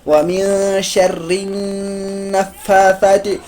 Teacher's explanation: فا پہ اوپر کھڑا زبر ہے، ایک الف کے برابر ہم کھینچیں گے